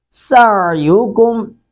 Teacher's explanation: عین کو حلق سے ادا کریں گے. سین کو سختی سے ادا کریں گے